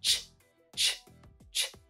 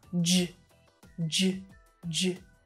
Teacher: It's made with air coming through your mouth and making that sound, ch. But if we keep our lips and everything in the same position, we change that unvoiced sound to be a voiced one using our vocal cords, j, j, j. These two sounds are the ones either side of our stressed vowel sound.